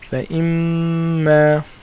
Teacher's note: Again, another rule, meem with a shadda. So we know we do ghunna for two harakas.